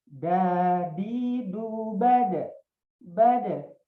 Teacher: kalau dal itu kan artinya syiddah, artinya suaranya tertahan, ya, suaranya tertahan.